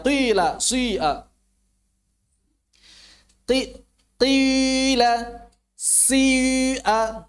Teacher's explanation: Jadi si ismamnya itu terus mengiringi kasrah. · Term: ismam syuyu'